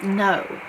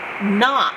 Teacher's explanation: if we open it it makes the long sound o if we close it it makes it short sound